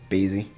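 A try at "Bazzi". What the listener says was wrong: Bazzy. I think it's Bazzy. I don't think you would pronounce the A as A.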